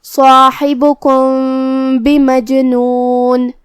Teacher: اخفاء کا معنی ہے چھپا دینا، تو ہم یہاں میم کو چھپاتے ہوئے لیکن غنہ کے ساتھ یہ حکم کو ادا کریں گے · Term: اخفاء شفوی